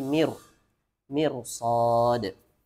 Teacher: ra-nya walaupun sebelumnya mim kasrah maka dibacanya tebal, mir, tidak mir, tapi mir.